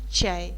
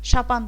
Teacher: Ш дыбысының орнына Ч дыбысын қолдану Алматы халқы үшін дағды. Шай деудің орнына чай, шапан деудің орнына чапан деп қолданады.